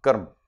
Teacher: it is the North Indian way of pronouncing, shortening the sound.